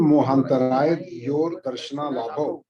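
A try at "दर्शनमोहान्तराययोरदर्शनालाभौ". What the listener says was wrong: यो तक बोलना, र अलग है।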